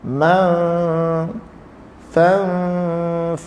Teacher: Ikhfa, kita sembunyikan dia, hilang bunyi nun tu. Ma Fanfajarat, hilang nun, ikhfa, sembunyi.